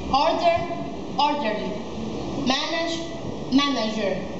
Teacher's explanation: the stress is placed on the first syllable